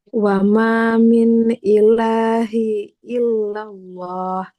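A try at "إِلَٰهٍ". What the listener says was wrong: Tidak ilahi ya. Kan ini harokat kasrohnya double ya. Tanwin. Ilahin.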